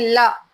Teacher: पार्श्विक व्यंजन जीभ के बगल से, यानी ल, ये होते पार्श्विक, ठीक है।